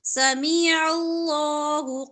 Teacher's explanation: پر کلکلہ ہے سمیع اللہ عین وسط حلق سے ادا ہوگا لام موٹا پڑا جائے گا اس سے پہلے زبر ہے